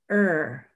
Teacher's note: You don't hear a vowel when you say the word. And er is a totally unitized vowel. You know, there's not a vowel plus R. It is just er.